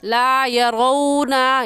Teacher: वाव लीन को हम नरमी से पढ़ेंगे, खींच कर नहीं पढ़ेंगे। ला यरौना, यरौ को खींच कर पढ़ना गलत होगा क्योंकि ये वाव लीन है, बल्कि नरमी से और जल्दी से पढ़ जाएंगे।